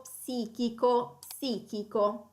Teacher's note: la difficoltà sta nel suono ps, che viene pronunciato come due consonanti separate, distinte